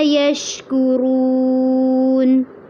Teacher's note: رو کو پر بھی کرنا ہے اور لمبا بھی کرنا ہے